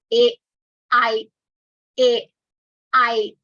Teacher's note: kantha talu, between the throat and the palate, like a, I, kantha talu.